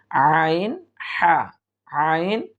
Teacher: আইনটা হচ্ছে হলকের মধ্য থেকে উচ্চারিত হবে